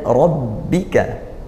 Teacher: ra fathah dibaca tafkhim tebal